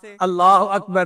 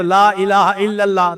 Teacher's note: لفظ اللہ سے پہلے اگر کوئی لفظ ہے اور وہ مفتوح ہے یا مضموم ہے تو اللہ کا جو لام ہوتا ہے نا اس کو پر پڑھتے ہیں، اس کو تفخیم کہتے ہیں قراء کی زبان میں۔